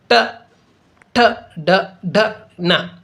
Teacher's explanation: ಅಂಗಳ ಇದೆಲ್ಲ ಅಲ್ಲಿ ಹುಟ್ಟಕ ನಾಲಿಗೆಯ ಸ್ಪರ್ಶಿಸಿ ಈ ಒಂದು ಅಕ್ಷರಗಳು ಉಚ್ಚರಿಸುವಂತಹ ಅಕ್ಷರಗಳಾಗಿರುವುದರಿಂದ ಇವುಗಳಿಗೆ ಮೂರ್ಧಾನ್ಯಗಳು ಅಂತಹೇಳಿ ಕರೆಯುವುದುಂಟು ಬಾಯಿಯ ಮೇಲ್ಭಾಗದಲ್ಲಿ ಹುಟ್ಟಿರತಕ್ಕಂತ ಅಕ್ಷರಗಳಾಗಿವೆ · ನಾಲಿಗೆ ಬಾಯಿಯ ಮೇಲ್ಭಾಗದಲ್ಲಿ ಹುಟ್ಟತಕ್ಕಂಥ ಅಕ್ಷರಗಳಾಗಿವೆ ಇವು.